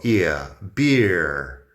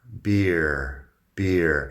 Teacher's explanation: Pues beer, la vocal es ear. Es un diptongo, ear, beer.